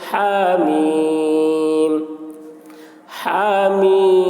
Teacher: مد لازم حرف مخفف کو 3 یا 4 الف کے برابر کھینچ کر پڑھیں گے